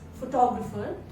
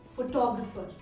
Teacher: you're putting the word stress on the second syllable